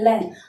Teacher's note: ल बोलेंगे तो जीभ ऊपर टच हो जाएगी, आसपास के दोनों हिस्से खुले रहेंगे, वहां से वायु क्रॉस होगी, तो इसलिए उसको पार्श्विक कहते हैं।